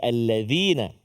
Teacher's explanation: Kalau dzal hujung lidah kita keluar sikit kan?